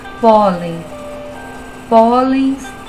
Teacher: Aqui ela continua sendo uma paroxítona, a sílaba tônica é o pó